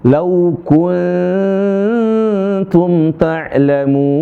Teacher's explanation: bukan dimonyongin ketika ikhfa, tapi kembali ke harakat, ke tarqiq